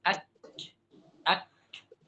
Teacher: Kaf dari tengah-tengah lidah tengah-tengah lidah ya dengan apa dengan langit-langit yang keras